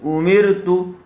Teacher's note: را ساکن سے پہلے زیر آیا ہوا ہے اس لیے را کو باریک کر کے پڑھیں گے